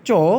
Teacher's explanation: আবার আমরা যদি বলি চ তাহলে অগোষ অল্পপ্রাণ।